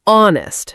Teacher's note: So in honest, we don't pronounce the H.